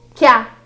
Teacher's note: nós também tivemos aqui a junção do que mais o a, que ficou quiá